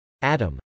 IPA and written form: ˈætəm (atom)